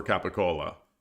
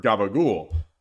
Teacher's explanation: the unvoiced C started sounding like G